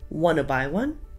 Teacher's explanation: Instead of asking, want to buy one, the words want and to flow into each other. So the T sound at the end of want and at the beginning of to are silent. So all we hear is wanna. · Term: connected speech